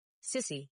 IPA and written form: ˈsɪsi (sissy)